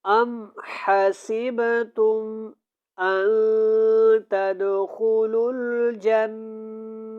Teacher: ام کے اوپر ہم نے اخفا نہیں کرنا، اور یہاں پہ با کے اوپر قلقلہ ہوگا